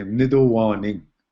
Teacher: So we actually pronounce it differently. Instead of the T, we use a D